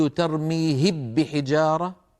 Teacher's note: لو قلت ترميهب بحجارة فإنني حينئذ أكون قد أدغمت الميم في الباء، وهذا لا يفعله أحد.